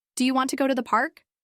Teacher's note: In this sentence, the stressed words are want and park. If you say, "Do you want to go to the park?" with equal stress on every word, it will sound unnatural.